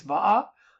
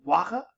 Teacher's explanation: the va-wa alternation in Hawaiian is still there